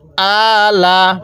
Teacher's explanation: হামজা এর মধ্যে টান দিবেন লামের মধ্যে টান দিবেন না